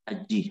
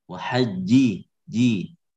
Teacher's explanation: Dia syiddah kemudian jahar.